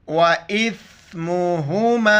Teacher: حمزہ کو ثا کے ساتھ ملائیں گے، مد کی وجہ سے کلمہ دار کھینچنا ہے.